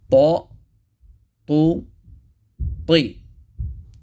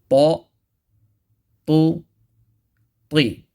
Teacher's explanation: It's with the tip of the tongue touching the roots or the inner gums right behind the thanaya ulya. And it's pronounced with the full mouth.